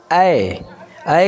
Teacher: ऐ कहने से भी हमारा मुंह क्या होता है, आधा खुलता है।